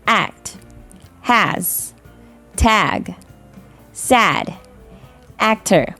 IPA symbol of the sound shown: æ